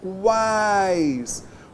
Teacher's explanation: quais, vogal a, semivogal u, semivogal i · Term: tritongo oral